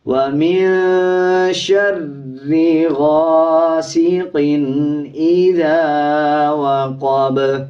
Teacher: قاف کے نیچے 2 زیر ہیں، اس کے بعد حمزہ آ رہا ہے، اس پہ غنہ نہیں کیا جائے گا۔ اکثر لوگ اس پہ غاسقٍ پڑھ دیتے ہیں، اس کو غنہ نہیں کیا جائے گا بلکہ جلدی سے ادا کیا جائے گا۔